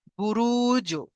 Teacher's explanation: তাহলে আমরা একটু কলকলা করে পড়বো এবং ধাক্কা লেগে একটু হালকা ধাক্কা দিয়ে আলাদা হয়ে পড়বো।